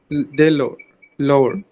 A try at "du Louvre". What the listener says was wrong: the? Why are you saying the? Du. Du. Louvre.